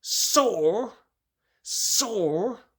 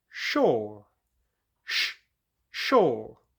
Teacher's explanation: Your teeth are staying closer together for the s sound because you're pushing it out like a snake. For the sh sound, your teeth are open. Your mouth is much more open, and remember your tongue is going backwards when you make that sound.